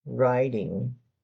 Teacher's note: In the United States, that T is probably going to sound more like a D